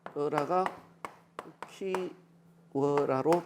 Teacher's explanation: 단모음 우가 반모음 우로 교체된 거죠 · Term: 반모음 교체